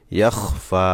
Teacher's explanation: এখানে ইয়াখ ফাতে সাকিন করা যাবে না, ফা খাড়া জবর আছে, খাড়া জবরে খাড়া জবর 1 আলিফ টান দিয়ে থামতে হবে